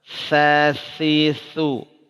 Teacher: Dia huruf rokhwah berjalan. Sa, hams dan rokhawah, berjalan suara, berjalan napas. Sasisu, ya, keluarkan napasnya. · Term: huruf sa